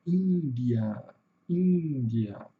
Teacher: A sílaba tônica é no começo, Índia, e aqui o schwazinho, né? O schwa aparece no final.